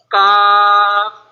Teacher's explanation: زبان کی جڑ اور تالو کے سخت حصے سے ادا ہوتا ہے